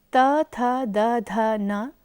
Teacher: त वर्ग अर्थात त, थ, द, ध, न तथा ल एवं स का स्थान दंत है